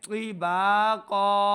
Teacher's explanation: قاف کو بھی موٹا پڑھنا ہے، حروف مستعلیہ سے ہے،